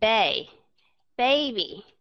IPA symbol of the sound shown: b